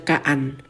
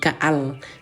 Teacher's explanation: nun mati ini kan karena sudah masuk kepada lam maka dia tidak boleh dibaca lagi. Jangan dibaca kaan ya atau bunyi n bunyi n ubah menjadi bunyi l ya ubah menjadi bunyi l ka menjadi kaal. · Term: idgham